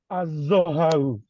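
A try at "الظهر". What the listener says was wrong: Please don't put fatha on the ha. The ha has a sukun. Al-dhahru.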